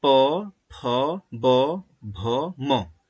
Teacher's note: इनका उच्चारण करते समय ओष्ठ मतलब ओठ आपस में स्पर्श करेंगे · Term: प वर्ग